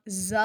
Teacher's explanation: زا ادا کرتے ہوئے زا سیٹی کی آواز آئے گی